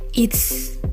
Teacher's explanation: Dalam frase it is dan it has, kala dikontraksikan fonem Z dari is atau dari has berubah menjadi s. Dan memang oleh karena pengaruh fonem tak bersuara itu, yakni T dari kata it.